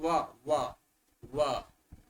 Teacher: वदन्तु व व व, ओष्ठ की भी सहायता हो रही है और जिह्वा भी स्पर्श कर रही, दांत भी की भी सहायता हो रही। तर्हि वकारस्य दन्तौष्ठम, दन्तानां सहायता भवति तथा च ओष्ठयोः।